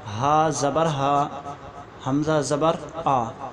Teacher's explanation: اور حمزہ اور ہا جو ہے یہ سینے کی طرف سے نکلتا ہے